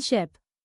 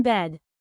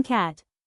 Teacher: front vowels, where the tongue is positioned near the front of the mouth.